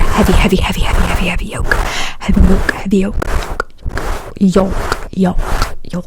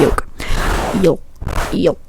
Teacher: when you say yolk, you don't really say the L.